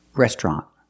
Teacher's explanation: We don't say restaurant. The T is a stop T at the end.